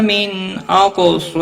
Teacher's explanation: نون ساکن کے بعد حمزہ آیا ہے اس لیے اظہار حلقی ہوگا